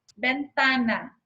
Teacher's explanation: sílaba tônica no penúltimo lugar